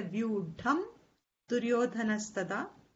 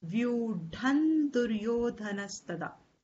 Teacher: So instead of ma, you will chant it as na.